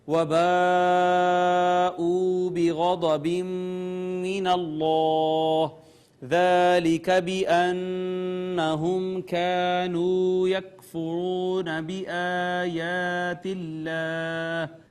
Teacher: ناظرین یہ مد متصل ہے، اس کے بعد واو مدہ، پھر یہاں پہ ادغام بالغنہ ہوا. اس میں جلالت کا ماقبل مفتوح تھا، مفخم پڑھا ہم نے